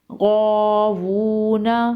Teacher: غین الف زبر غا، واو الٹا پیش وو، غاوو، نون زبر نا، غاوون، وقف، غاوون۔ غین حروف مستعلیہ میں سے ہے، اسے پر پڑھیں گے